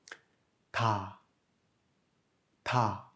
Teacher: le tiget se situe quelque part entre le D et le T.